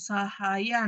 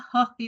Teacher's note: karena heh itu termasuk bunyi glotal